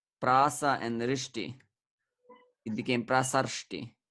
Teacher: The vowel R turns into Ra